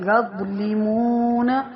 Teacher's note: ذا کی آواز موٹی اور نرم ہوتی ہے